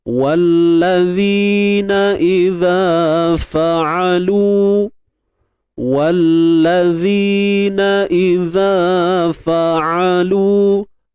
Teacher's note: Untuk huruf zal ada dua kan kat sini. Jadi dua-dua ni kena keluarkan sedikit hujung lidah.